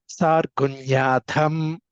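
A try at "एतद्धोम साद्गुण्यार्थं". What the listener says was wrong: సార్ రేఫ చెబుతారు. సాద్గుణ్యార్థం అర్థం సాద్గుణ్య plus అర్థం సాద్గుణ్యార్థం.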